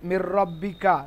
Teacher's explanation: মধ্য থেকে কোন একটি অক্ষর যদি আসে তাহলে তাকে ইদগাম বলে লাম এবং র দুইটি বর্ণে ইদগাম হবে গুন্না ছাড়া ইদগাম মানে হচ্ছে কি মেলানো ইদগাম মানে মেলানো একটা আরেকটার সঙ্গে · নুনের উচ্চারণটা র এর সঙ্গে মিক্স হয়ে যাচ্ছে